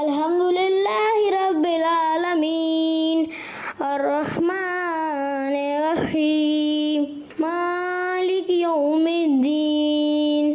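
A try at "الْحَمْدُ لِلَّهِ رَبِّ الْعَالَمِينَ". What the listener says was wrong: مگر کچھ چیزوں میں جیسے را کی ادائیگی ان سے صحیح ادا نہیں ہو رہی تھی.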